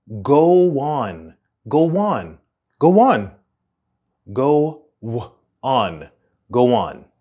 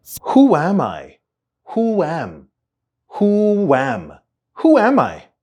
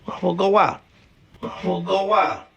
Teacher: Okay, this one's a little more complicated, but when the first word ends in a rounded vowel sound and is followed by a word that begins with a vowel, those two are often connected and create a w sound in the middle. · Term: linking with the sound w